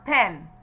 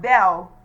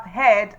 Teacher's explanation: The short E sound, the tongue is also positioned forward and it comes higher. The lips are still unrounded.